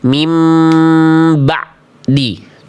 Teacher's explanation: Dia melafalkan ain sukun sudah jadi ain tapi sifatnya masih putus.